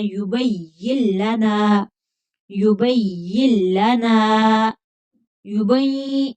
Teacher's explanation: نون کی آواز نہیں آنی چاہیے ، نون کو کھینچ کر پڑھیں گے، آگے خالی الف ہے، · یا کو لام کے ساتھ ملا دینا ہے ، یبین لنا، یبین لنا، یبین، نون کی آواز نہیں آنی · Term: ادغام بلا غنہ